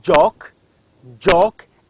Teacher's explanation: you can feel that there is a sound of d before j so it becomes as j j as in jock joke and